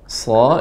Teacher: sifatnya tebal. Dia hamas, udaranya banyak, sofir juga tajam.